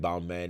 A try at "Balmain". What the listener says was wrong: is the one that I get frustrated with, and how people say Balmain, and I'm like, no, it's not Balmain. It's en français. You say Balmain. Yeah, Balmain. You don't pronounce the N. It's Balmain. Yeah, because even like hands in French is main. So like the last part of Balmain is like it's hand. It's like Balmain. So you say Balmain. You don't say Balmain.